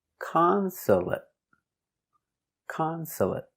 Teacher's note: three syllables the stress is on the first syllable